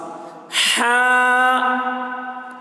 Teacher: हा ये हलक से बोलते हैं, यानी हलक को खोलते हैं, मुंह को जब ज़्यादा खोलते हैं तो हा अच्छे तरीके से इसकी अदायगी होती है।